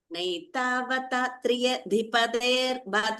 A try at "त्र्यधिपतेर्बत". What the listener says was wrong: Triya, when you say three here, you are giving two words. Triya is one word. Don't say triya. Say triya. What you are doing is Triya. So remove the I. Trya. Because of that, one extra word, the beat is going.